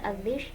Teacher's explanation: sifat hurufnya bertentangan, seperti adhish, dha, dan shin. Ini sifat hurufnya bertentangan ya, karena dha ini tebal, shin itu tipis